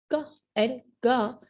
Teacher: When you try to produce these two sounds क एंड गा, you can feel the lower side of your tongue or the back side of your tongue touching the soft palate.